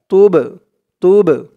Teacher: এই বাটা হচ্ছে কলকলার হরফ, ধাক্কা দিয়ে পড়তে হবে। কলকলার হরফ মানে ধাক্কা দিয়ে পড়া